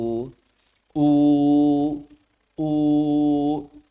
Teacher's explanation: ada unsur wawunya sedikit, maksudnya monyong. Begitu maksudnya. Dan pangkal lidah yang naik. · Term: Domah